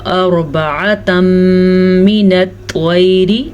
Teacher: را کو ہم پر پڑھیں گے کیونکہ را ساکن سے پیچھے والے حرف پہ زبر ہے تو یہ را پر پڑھی جائے گی۔